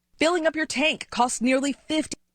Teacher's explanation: Filling up your tank costs, and her T was gone. · S is a strong sound, cancels the T. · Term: the T is gone